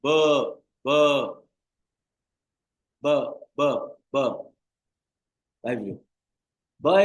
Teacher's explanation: while articulating the B sound you would feel the vibration in your throat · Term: voiced